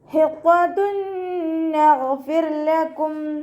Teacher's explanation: ഗൈന് ഇസ്തിഅലാൻ്റെ ലെറ്ററാണ്, ഉയർത്തിയിട്ട് ഉച്ചരിക്കുക. കൽക്കലയുടെ ലെറ്ററിലാത്തത് കൊണ്ട് ഹാഫ് സുക്കൂന് കൊടുക്കുക, ശ്രദ്ധിക്കുക കേട്ടോ. · തെൻവീനിനെ നൂനിലേക്ക് ലയിപ്പിച്ച് ഉന്നയോടുകൂടി ഓതി കൊടുക്കുക, ലയിപ്പിക്കും വേണം, അതോടൊപ്പം തന്നെ നന്നായിട്ട് മണിച്ചു കൊടുക്കും ചെയ്യുക കേട്ടോ. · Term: ഇദാം ബിഉന്ന